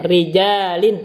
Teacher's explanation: Dibaca tarqiq di dalam 4 tempat. Pertama kalau dia dibaca kasroh, ro-nya kasroh, contohnya rijalin, ri-nya itu tarqiq.